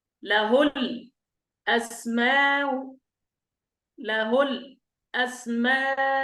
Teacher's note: نقرأ بالسكت في الهمزة الأولى ثم نسهل الثانية مع المد والقصر. يعني نسكت هنا أيضا ثم نسهل الثانية مع الروم والمد والقصر.